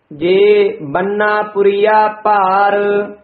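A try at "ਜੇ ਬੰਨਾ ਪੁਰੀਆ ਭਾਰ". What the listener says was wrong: जे इथे यमक, बन्ना पुरिया पार, ये बन्ना पद जेड़ा है भारा उच्चारण करना, बन्ना नहीं कहना है, जिस तरह महाराज साहब दे वचन हन, परमेश्वर दिता बन्ना, उत्थे बन्ना है, बन्ना दा अर्थ है पुत्र, इत्थे बन्नन दा वाचक है, थोड़ा जा भारा बोलना है।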